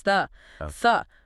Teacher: that's a function word. It gets the schwa.